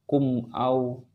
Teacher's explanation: Jadi di sini adalah mim mati, dia menghadapi alif. Ini tidak boleh juga ditahan atau didengungkan, tetapi dia harus dibaca jelas karena hukumnya adalah izhar syafawi, ya. Mim mati dia menghadapi selain huruf ba dan juga huruf mim.